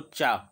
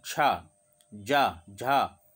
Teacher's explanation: जीभ ऊपर जाके टच हो जाती है तो ये तालु से बोले जाते हैं, तो इनको हम तालव्य कहते हैं।